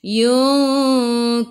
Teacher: ikhfa hakiki dengan 2 harakat bawa ke sisi huruf kaf · Yunkiru, ra baca dengan tebal, ra baris depan. Tafkhim nama dia. Kiru, ru biar ada getaran.